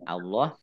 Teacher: Allahnya dibaca tebal karena di harokah di depannya fathah. Harokah di depannya dibaca fathah, ini Allah.